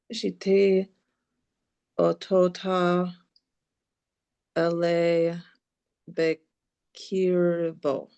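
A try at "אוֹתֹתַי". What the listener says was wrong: Ototai. This gets pulled into a yod sound. Ototai.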